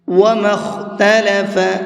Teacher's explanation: خا کو منہ بھر کے پڑھیں گے